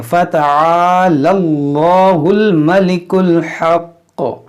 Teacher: اس میں جلالہ سے پہلے زبر ہے, اس کو موٹا کریں گے.